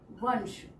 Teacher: वंश श जब हम बोल रहे हैं तो दांतों के पीछे से हवा बाहर को निकलती है, तब वो श निकलता है। तो यानी कि इसका जो अनुस्वार होगा वो भी दांतों के पीछे से टच होके आ रहा है, इसलिए वंश, तो न की साउंड आ रही है, इसलिए यहाँ पर भी आएगा वंश।